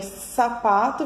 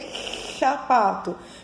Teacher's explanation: ao invés de fazer sapato, vou ter chapato, quando eu tenho um escape de ar na fala